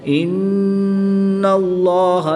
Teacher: नून मुशद्दिद में गुन्ना आनी करके पढ़ेंगे